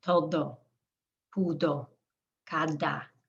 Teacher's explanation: the D has the tongue against the back of the teeth. It's a longer sound.